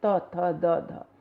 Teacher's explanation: हमारी जीभ की नोक ऊपर के दांतों के पास जाकर स्पर्श करती है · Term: तय वर्ग